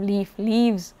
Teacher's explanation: fricatives are voiced between voiced segments